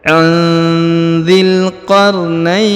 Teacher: Huruf na di ayun dibaca panjang 2, boleh 4, boleh 6 ya. Karena di depan huruf na terdapat ya sukun atau ya mati sebelum huruf pemberhentian.